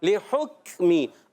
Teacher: کاف شدیدہ محموسہ حرف ہے, سختی کے ساتھ آواز بند بھی ہوگی, پستی نرمی سے سانس بھی جاری رہتا ہے.